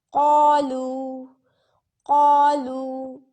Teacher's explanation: قاف کو بھی موٹا کریں گے اور الف میں بھی موٹائی آئے گی